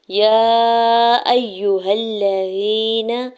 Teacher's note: یا کے اوپر کھڑی زبر اور مد منفصل ہے، 4 سے 5 حرکت کھینچ کے ادا کریں گے۔ حمزہ کے زبر کو یا مشدد کے ساتھ ملاتے ہوئے پڑھنا ہے، ہا کے زبر کو لام مشدد کے ساتھ ملاتے ہوئے پڑھیں گے۔